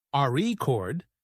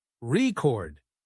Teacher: if you stress the first syllable, a record, it's a noun. But if you stress the second syllable, record, it's a verb